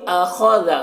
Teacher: خا حروف مستعلیہ میں سے پر پڑھیں گے، را کو پر زبر ہے، را کو پر پڑھیں گے۔